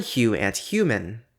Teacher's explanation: The palatal fricative does appear as an allophone of /h/ before /juː/